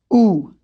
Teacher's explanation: To make the sound ooh, I round my lips and the inside of my mouth